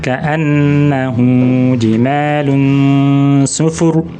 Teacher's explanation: Hu adalah mat silah qasirah, dibaca 2 harokat